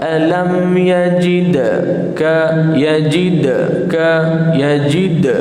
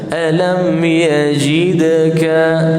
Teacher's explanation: yajidaka qalqalahkan, qalqalah kecil, qalqalah sederhana pada dal.